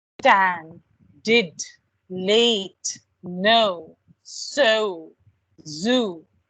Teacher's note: words there are where your tongue is touching the alveolar ridge